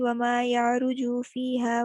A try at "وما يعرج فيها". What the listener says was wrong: مجھے کہیں کہیں لگ رہا ہے یا مد اصلی ہو رہی ہے، جیسے یارجو میں نا صرف گزار دینا یارجو، بس کچھ سننے میں مجھے لگا کہ جیسے مد اصلی ہو رہی ہے. اس کو ذرا سے چیک کر لیجیے گا، باقی ٹھیک ہے ماشاءاللہ.